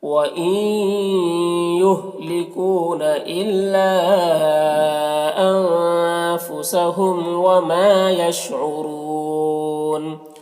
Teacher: را کو پر پڑھیں گے اور وقف کی صورت میں مد عارض وقفی ہوگا، تو اس طرح سے پڑھیں گے۔ · ہم کے میم میں اظہار شفوی ہو رہا، اسے جلد پڑھنا